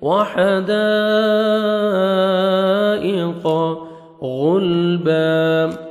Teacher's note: وحدائق غلبا غین کو موٹا کر کے پڑھیں گے اور لام کے سر آپ نے ہلانا نہیں ہے. غلبا جب سٹاپ کریں گے با زبر الف ہو جائے گا, 1 سیکنڈ آپ نے با کو کھینچنا ہے.